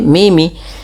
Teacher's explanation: mim yang pertama dimasukkan kepada mim kedua dan ditahan sepanjang dua harakat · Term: idgham